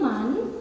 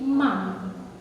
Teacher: Kalau iqlab yang tadinya man berubah jadi mam. Konsonan huruf N berubah jadi M.